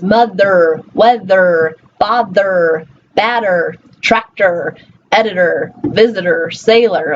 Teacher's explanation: whether it's ER, OR, or AR on some words, it's always going to get the same sound, the schwa and then the R